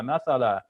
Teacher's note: I'm saying masala because I'm pausing so I'm making that a sound long